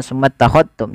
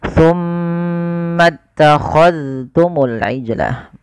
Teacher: jangan diidghamkan ke huruf ta, tapi zalnya ditampakkan dengan jelas